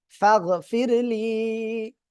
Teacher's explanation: আংতা, ফাগফিরলি, ফা গইন জবর ফাগ, ফা র জের ফির, ফির র সাকিন তার ডানে জের চিকুন করে পড়তে হবে।